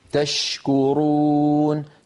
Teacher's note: حرف الشين والتدفق الواضح للنفس معه